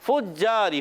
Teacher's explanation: اوپر کے دانتوں کے کنارے جب نیچے والے ہونٹ کے تر حصے سے لگتے ہیں فا ادا ہوتا ہے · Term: فا کا مخرج